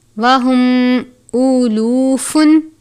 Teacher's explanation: میم ساکن ہے، اس کے بعد واو ہے. اظہار شفوی کا قاعدہ لگتا ہے یعنی غنہ نہیں کرتے